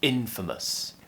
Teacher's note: So practice with me, infamous. And don't forget the stress is on the first syllable here, infamous